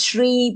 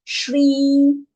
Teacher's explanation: not Sri, is Shri, because it's the palatal sha